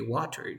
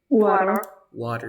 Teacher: you pronounce t or d like r in Spanish like in the word Catalina